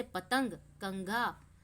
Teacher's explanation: है अब इस चिन्ह को इस बिंदु को अनुसार कहते हैं अनुस्वार का उच्चारण नाक से होता है